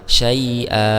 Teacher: Kalau kita waqaf di sini berarti mad iwad ya, karena ada fathatain yang karena fathatain berada di ayat yang diwaqafkan, maka di sini bukan lagi fathatain ya, tapi dia berubah menjadi fathah biasa, kemudian dipanjangkan sebanyak 2 harakat.